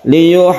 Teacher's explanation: Dipanjangkan, haknya ini panjang sekali sampai 3 alif atau 6 harokat. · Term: mad lazim mutawal